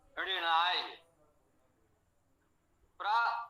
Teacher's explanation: प्रा उपसर्ग के कारण, इसमें रा होने के कारण इस ना का णा हो गया है, तो ऋणाय पढ़ा गया।